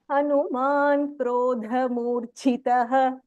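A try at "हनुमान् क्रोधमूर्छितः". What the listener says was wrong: Very good. Very well repeated.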